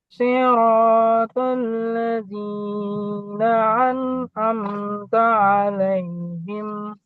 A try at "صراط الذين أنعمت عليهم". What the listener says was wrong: Itu tadi terlalu panjang, dipendekin sedikit. Siratal ladzina ghairil.